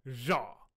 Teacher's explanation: That's a pharyngalized, voiced, alveolar, lateral fricative.